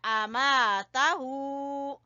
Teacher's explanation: हमजा जबर आ, मीम जबर अलिफ मा, अलिफ मद्दा, आमा, ता जबर ता, आमाता, हा उल्टा पेश हू, आमाताहू। मा को खींचा अलिफ मद्दा की वजह से और ता को बीच में छोटा पढ़ना है और हू को खींचना है और आ को भी छोटा कहना है, आमाताहू।